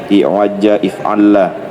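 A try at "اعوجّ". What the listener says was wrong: Ya, i'wajja if'alla. Bagus.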